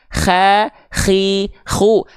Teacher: Kho punya sifat mengalir nafas juga tapi karakternya seperti mendengkur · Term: huruf koho